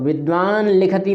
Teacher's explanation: विद्वान लिखति में जो ला है वह अनुनासिक ला है